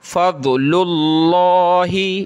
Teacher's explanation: لفظ اللہ سے پہلے یہ پیش ہے لام پہ تو موٹا کر کے پڑھیں گے